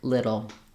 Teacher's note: notice that little and middle I use a flap sound for that